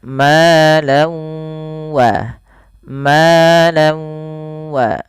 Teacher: Karena bertemu dengan huruf wau, nanti setiap kita membacanya tanwinnya, bunyi nunnya dimasukkan ke wau sehingga diganti dengan w. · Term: idgham bighunah